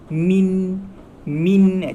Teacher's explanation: masa kita matikan nun tu, hujung lidah kita akan sentuh dekat langit.